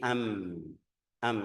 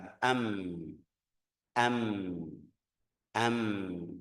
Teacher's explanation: Ini bibir bawah sama bibir atas ketemu jadi makhrajnya dari ee antara dua bibir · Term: mim